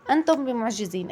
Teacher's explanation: أخفينا الميم الساكنة عند الباء لأن الباء من حروف الإخفاء الشفوي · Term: إخفاء شفوي